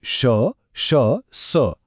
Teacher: हे उच्चारताना तोंडातून गरम हवा बाहेर पडते जणू काही घर्षण होतय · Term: उष्मे